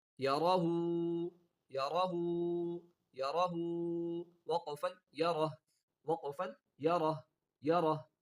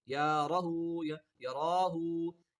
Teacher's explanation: یا اور را دونوں کے اوپر کیا ہے زبر ہے، ان دونوں کو نہیں کھینچنا، ہا کو کھینچنا